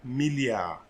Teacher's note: you see i'm not pronouncing the d